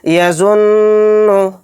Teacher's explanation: नाक में थोड़ी देर आवाज़ को भिन भिनाना है नून के अंदर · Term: गुन्ना